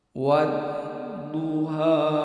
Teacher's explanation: Jadi huruf Dad ini mempunyai sifat istilah, jadi dibaca tebal. Ini tempat keluarnya itu pada dua sisi lidah atau salah satunya, itu kiri atau kanan, menempel pada gigi geraham pada bagian atas